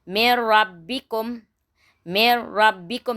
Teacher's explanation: Kita masukkan huruf ra tapi tak didengungkan. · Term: idgham bila gunnah